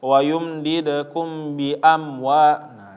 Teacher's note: Bedanya kalau iklab itu pengaruhnya gara-gara tanwin, kalau ikhfa syafawi itu gara-gara mim asli ya, mim asli. Mim ketemu ba maka ditahan, dua-duanya ditahan ya Bapak. Jangan langsung pindah.